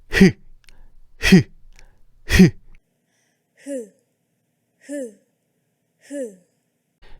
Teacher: 폐 나오던 공기가 목구멍 속에 성대로 인해서 마찰이 발생해서 나는 소리야. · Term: 히을